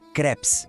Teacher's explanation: presta atenção no som do E. Ele é mais aberto, sabe?